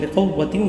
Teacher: بقوہ کی قاف کو موٹا پڑھا ہے میں نے